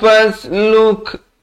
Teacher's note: Ada bunyi hamasnya, bunyi angin di situ.